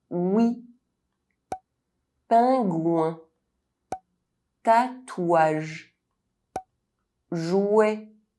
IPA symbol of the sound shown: w